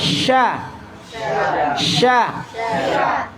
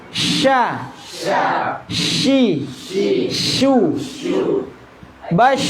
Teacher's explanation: Infitah buka mulutnya, sya. Istifal lidahnya tetap di bawah, yang naik hanya tengahnya. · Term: tengah lidah